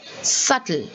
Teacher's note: the b is not said at all there you say subtle